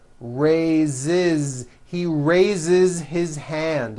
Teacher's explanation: So we say I raise with a voiced Z ending, and he raises.